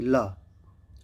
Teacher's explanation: हवा जो है वो जीभ के साइड से निकलती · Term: पार्श्विक व्यंजन